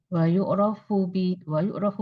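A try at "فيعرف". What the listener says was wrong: Fa pakai fa nih?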